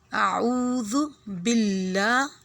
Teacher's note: لام کو کھری زبر ہے، اس کو تھوڑا لمبا کریں گے